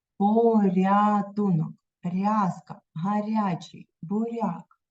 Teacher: помітили як м'яко ніжно вимовляються р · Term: М'який приголосний